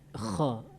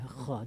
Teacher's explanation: Harus jelas dia kha di halaq. Kemudian mematikan huruf, dia jangan ngekor. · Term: huruf kha